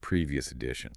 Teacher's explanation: We connect the S sound at the end of previous to the vowel sound at the beginning of edition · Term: linking